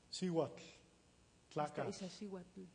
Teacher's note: O sea, la TL es sorda en posición final. Es un sonido sordo en posición final. En otras posiciones se vuelve sonoro.